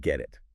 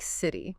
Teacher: It sounds less like a sharp T and more like a soft D, or even sometimes a quick R sound. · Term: flap T